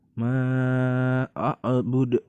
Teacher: Karena apabila terjadi suatu kondisi di mana huruf qalqalah berada di akhir kalimat, jadi cara bacanya pun dipantulkan ya. Maka jadi disebut dengan qalqalah kubro.